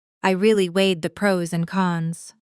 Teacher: Noticing how weighed the naturally blends together.